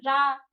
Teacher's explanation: र ऐसे कुछ जीभ हमारी वाइब्रेट करती है। कुछ कंपन टाइप का होता है। · हमारी जीभ लुढ़क के थोड़ा रा, रा थोड़ा कंपन सा करती है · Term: प्रकंपित या लुंठित व्यंजन